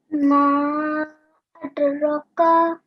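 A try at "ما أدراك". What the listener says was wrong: Make sure that you elongate for 2 seconds here as well. Ma adraka.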